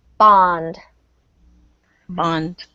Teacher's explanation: This O gets an ah sound because it's between 2 consonants.